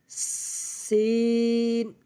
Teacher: জিহ্বার আগা সামনের নিচে দুই দাঁতের পেট ও আগার সঙ্গে লাগাইয়া সিন। আগে হালকা করে বাতাস বের করে নেব, তারপর উচ্চারণ করব, সিন।